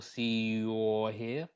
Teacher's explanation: We get a Y sound in front of the or, so we get your, see your here.